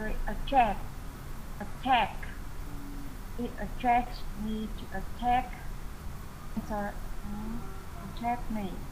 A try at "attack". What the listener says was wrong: I think you've switched. Be careful with your pronunciation of attack. Okay, no R sound at all. Attack and attract.